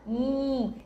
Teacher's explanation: este som quando os meus dois lábios se unem e se fecham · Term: som do M